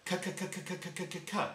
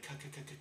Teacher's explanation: when you make the k sound, your tongue goes up against the roof of your mouth, in the middle of your mouth, k, and there's an explosion of air from behind it.